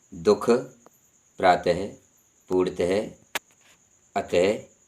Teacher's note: विसर्ग जब बोला जाता है तो इसका उच्चारण करते समय इसकी आवाज़ हा के रूप में निकलती है। इसका निर्धारित चिन्ह विसर्ग यानी अंग्रेजी में कहते हैं कॉलन है, जैसे दुख, प्रातः, पूर्णतः, अतः आदि।